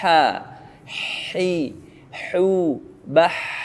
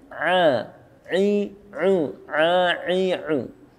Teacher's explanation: Yaitu nafas. Kalau ha bernafas, sedangkan ain tidak.